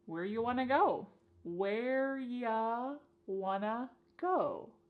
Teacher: You becomes y and want to becomes wanna. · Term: reduction